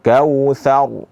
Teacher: pada huruf ra yang sukun ini, itu sebelumnya didahului oleh huruf tha yang berharakat fathah, maka dibaca dengan bacaan yang tebal. Jadi jangan dibaca kautsar, sehingga itu bacaan tipis.